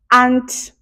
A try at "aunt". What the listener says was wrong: Yours kind of sounds like an ant that's walking on the floor. Ant. walking on the floor. It's see the same, but ant. Not like aunt.